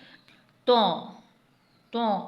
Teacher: तों को हमने मुंह को गोल करके थोड़ा पुर करके पढ़ना है। तौ तों मुंह को पुर और गोल करके पढ़ना है।